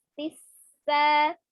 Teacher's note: Sifat sin ada as-shafirnya maka jangan diputus, tisa begitu ya, ada tasdidnya.